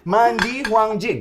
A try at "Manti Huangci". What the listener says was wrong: Manti Huangci. Di itu dibaca ti.